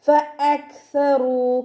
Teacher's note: കാഫ് സുക്കൂനിലാവുമ്പോൾ കുറച്ച് എയർ പുറത്തോട്ട് പോണ സൗണ്ടിൽ വേണം ഉച്ചരിക്കാൻ കേട്ടോ. ഫഅക്സറൂ സ ലൈറ്റ് ആക്കിയിട്ട് ഉച്ചരിക്കുക.